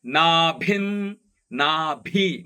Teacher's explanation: ನಾಭಿ ಮಹಾಪ್ರಾಣದ ಭಿ ಅನುಸ್ವಾರ ಒಟ್ಟಿಗೆ ಹೇಳುವಾಗ ಅರ್ಧದಂತೆ ಕೇಳಬೇಕು